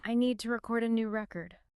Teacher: Noun versus verb. The stress shifts from the second syllable to the first.